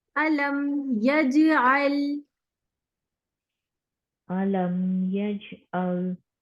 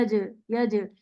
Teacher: यहाँ जब जीम हम साकिन पढ़ेंगे, इसको हम डबल साउंड के साथ पढ़ेंगे।